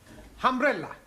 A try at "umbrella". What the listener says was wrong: Good, but not humbrella, umbrella.